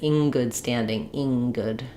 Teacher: an ing tends to have a higher, more nasal vowel because it's already getting ready for the ng sound.